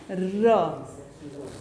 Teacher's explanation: लुंठित या प्रकंपित व्यंजन वो व्यंजन होता है जिसका उच्चारण करते समय सबसे ज़्यादा वाइब्रेशन होती है, मतलब सबसे ज़्यादा कंपन होती है, वो होता है हमारे लुंठित व्यंजन।